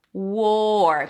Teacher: Make sure you drop the tongue after the W so it doesn't sound like were